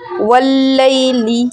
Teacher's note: لام پہ رکیں گے، دباؤ ڈالیں گے، سختی سے پڑھیں گے واللیلی، پھر لی کو جلدی پڑھ کے ای بولیں گے واللیل